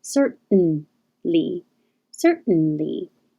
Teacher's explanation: Certainly, the same as beaten, cert, the tongue goes up to the T position, but you hold it there for the N noise.